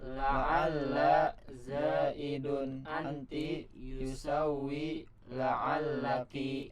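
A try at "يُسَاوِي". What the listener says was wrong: Ya, yusawi gitu ya, bukan yusawi. Wa-nya bukan apa? Enggak ada tasdidnya ya, tapi yusawi, sa-nya panjang, yusawi gitu.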